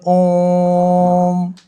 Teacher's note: इनके उच्चारण में दीर्घ स्वर से भी अधिक समय लगता है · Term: प्लुत स्वर